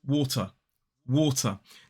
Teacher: water in a modern British RP accent ends in a schwa